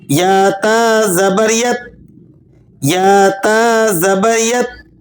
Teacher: تا کو ادا کرتے وقت زبان کی نوک اوپر والے دانتوں کے مسوڑوں پر لگے گی اور نرمی کے ساتھ لگے گی۔ تو کی طرح آپ نے اس کو سختی کے ساتھ نہیں پڑھ دینا، بلکہ اسے نرمی سے زبان کو اوپر والے دانتوں کے مسوڑوں پہ لگا کے نرمی سے پڑھیں۔